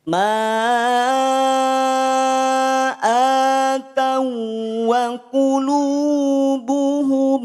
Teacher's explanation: Cukup leburkan waw yang sukun ke waw berikutnya. Atawa, tidak atawa. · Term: idgham mutamasilain